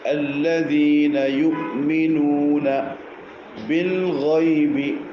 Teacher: നാവിൻ്റെ അഗ്രവും ഊനും മുകളിൽ മുൻപല്ലിൻ്റെ മുകൾ ഭാഗം നൂൻ.